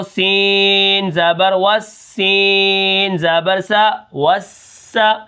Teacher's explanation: سب سے پہلے واو کو سین کے ساتھ اس لیے ہم ملائیں گے کیونکہ سین کے اوپر تشدید ہے اور سین کے اندر سیٹی بھی ہے